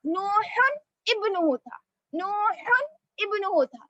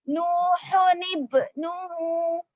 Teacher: حمزہ وصل کو گراتے ہوئے ایک حرکت کے ساتھ، یعنی دو پیش نہیں پڑیں گے بلکہ ایک پیش کے ساتھ نون مکسور لاتے ہوئے آگے کے حرف سے ملائیں گے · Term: نون خطنی